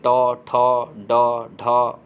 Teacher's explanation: ऐसे किरीट व्यंजन यानी जिह्वा के लचीले के सामने के हिस्से के उच्चारित होते हैं, उसे जिह्वा द्वारा वत्स्य कटक तथा कठोर तालु के बीच उच्चारित होते हैं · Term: मूर्धन्य व्यंजन